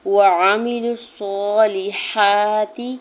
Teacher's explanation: واو کے زبر کو عین کے زبر کو میم کی زیر کو بغیر کھینچے ہوئے ادا کرنا ہے۔